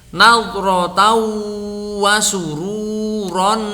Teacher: ada tanwin deret bertemu dengan wawu, maka dibaca dengung yang lama.